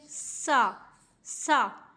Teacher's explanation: سین میں سیٹی کی آواز آنی چاہیے، سا سا۔ یا کو صاد کے ساتھ ملاتے ہوئے یہاں پہ ہمیں سیٹی کی آواز کو نہیں لے کر آنا، کیونکہ سیٹی کی آواز سین میں ہوتی ہے، صاد میں نہیں ہوتی۔